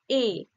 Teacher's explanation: এ যখন উচ্চারণ করছি কি হচ্ছে ঠোঁটের আকার কিরকম হচ্ছে এ ঠোঁটটা ছড়িয়ে পড়ছে অর্থাৎ প্রসারিত হচ্ছে · ঠোঁটটা ছড়িয়ে পড়ছে, অর্থাৎ প্রসারিত হচ্ছে, তাই এটা প্রসারিত।